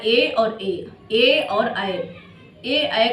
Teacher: ए ऐ का उच्चारण स्थान क्या है कंठ और तालू है